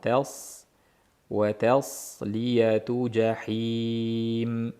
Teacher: Lekin ta'ni ingichka qilaman deb tasliyatu bo'lmasin. Tas ta ingichka, sod yo'g'on.